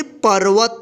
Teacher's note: पर्वत। यानी इस रेफ की मात्रा का उच्चारण जो है ना, प के बाद आधा र होगा, ठीक है। पर्वत।